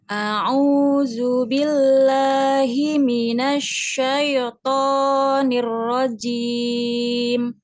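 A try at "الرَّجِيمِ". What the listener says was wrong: Jimnya, hati-hati jim. Nirra. Ar-rajim. Jim, ya. Jangan ada desis. Jajiju. Jajiju.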